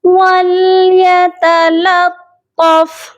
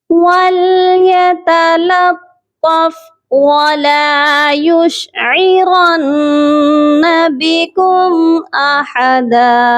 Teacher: یہاں پر آپ دیکھیے کہ دو طا ہیں، ایک طا کو آپ نے باریک پڑھنا ہے اور دوسرے طا کو آپ نے موٹا پڑھنا ہے. اس چیز کا آپ نے خیال رکھنا ہے ورنہ معنی بدل جانے کا اندیشہ ہے.